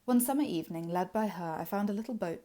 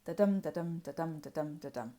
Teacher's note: So, something you may have noticed fairly quickly is that this is a poem written in Iambic Pentameter. That is, there are 10 beats, 10 syllables within each line, and they're in a pattern of unstressed, stressed, unstressed, stressed. Da-dum, da-dum, da-dum, da-dum, da-dum.